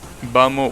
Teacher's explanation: instead of saying vamos, sometimes you will say vamos without the S, because you're speaking in a way that you just want to get over with whatever you're saying.